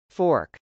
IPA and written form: fˈɔːrk (fork)